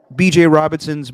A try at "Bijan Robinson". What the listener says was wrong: You said BJ.